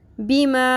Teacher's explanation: چھوٹی مد ہے، اس کو ہم 3 الف کے برابر لمبا کھینچیں گے